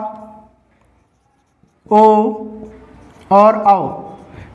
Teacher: ओ और औ का उच्चारण स्थान क्या होगा इसका उच्चारण स्थान होगा कंठ और ओष